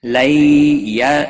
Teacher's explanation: یا لین ہے، تھوڑا نرمی کے ساتھ کھینچ کر ادا کریں گے، لو کو کھینچنا نہیں۔